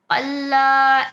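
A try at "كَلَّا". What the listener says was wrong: کلا چھوٹا کاف، ناٹ قلا. چھوٹا کاف اس لیے ہم اسے کلا پڑھیں گے.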